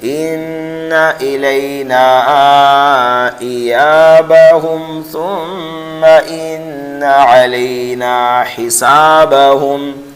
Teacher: اس ہم کے اندر آپ جو ہے غنہ نہیں کریں گے بلکہ اظہار کریں گے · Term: اظہار شفوی